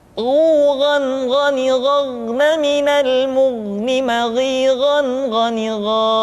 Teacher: Diucapkan seperti kita mengucapkan huruf kha, yaitu diucapkan dari pangkal tenggorokan kita. Yang membedakannya adalah kha mengalir nafas dan gha tidak mengalir nafas. Dan keduanya memiliki persamaan, yaitu memiliki sifat al-isti'la. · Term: huruf gha